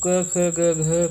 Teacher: क ख ग घ का उच्चारण स्थान होता है कंठ